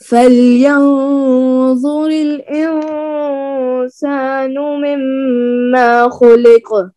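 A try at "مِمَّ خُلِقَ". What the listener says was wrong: نو مما نہیں کر، لانگ نہیں کر، غنہ کریں لیکن الف نہیں ہے یہاں پہ. آپ نے جب یاد کرنا ہے نا بائی ہارٹ تو یہاں پر کیئرفل ہو کر یاد کرنا ہے. مما کو لمبا نہیں کرنا. مما نہیں.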